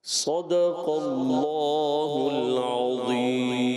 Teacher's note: صاد کو موٹا رکھنا ہے، صدق اللہ کا بھی موٹا رکھنا ہے، اللہ کا لام بھی موٹا